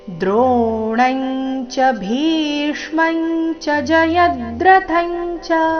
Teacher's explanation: ಚರಣದಲ್ಲಿ ಬಂದಿರೋ ಎಲ್ಲ ಅನುಸ್ವಾರಗಳ ಉಚ್ಚಾರಣೆ ಚ ವರ್ಗದ ಅನುನಾಸಿಕದ ರೀತಿ ಬರಬೇಕು, ಯಾಕಂದ್ರೆ ಮುಂದೆ ಚ ನೇ ಬಂದಿದೆ.